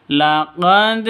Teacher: Harus dipantulkan ke dalnya, tapi agak rendah ketimbang qalqalah kubra.